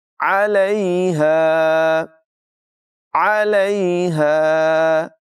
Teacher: आइन की आवाज़ हलक़ के दरमियान वाले हिस्से से अदा होगी।